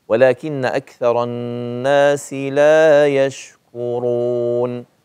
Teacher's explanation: لا يشكرون ولكن اكثر الناس لا يشكوا ش ش ش كرون استفل الكاف ثم فخم الراء بضم الشفتين